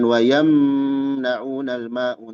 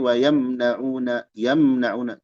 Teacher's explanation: izhar syafawi dibaca jelas jangan ditahan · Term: idhar syafawi